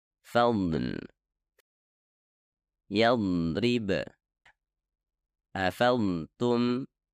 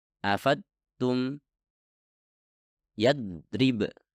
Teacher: Anda akan merasakan udara dilepaskan dari samping lidah anda dan udara tersebut terasa sedikit mendorong ke bagian dalam pipi Anda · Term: sifat istitalah